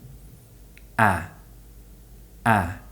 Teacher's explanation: this sound is produced with the mouth open and the lips smiling and when we do this it pulls the tongue forward this gives the sound its technical name the near open front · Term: near open front unrounded vowel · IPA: /æ/